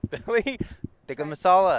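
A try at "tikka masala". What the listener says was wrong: it sounds like you're doing a hard tea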